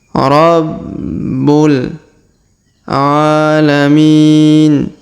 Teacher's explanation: Huruf bu berharokat tasdid maka kita tahan dan kita tekan